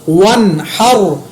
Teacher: واو زبر نون ون، ہا زبر را حر، ون حر، یہاں پر دیکھیں میں نے نون کے اوپر نہ اخفا کیا نہ غنہ کیا، کیوں کہ آگے حروف حلقی ہے، صرف را کو میں نے پر پڑھا، حر، ٹھیک ہے۔